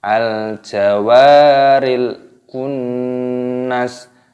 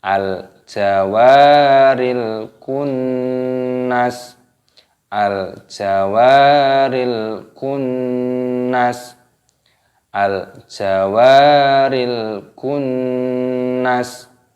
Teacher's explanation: nun tasdid, hukumnya yaitu gunnah. Cara mengucapkannya yaitu dengan cara didengungkan, jadi dibaca berdengung, kunnas, dan nunnya pendek, jangan dipanjangkan, kunnas, tidak seperti itu.